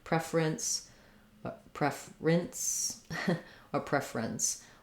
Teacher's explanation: will just use two syllables in this word saying preference so because we're stressing now on the pre we use the e or red tent vowel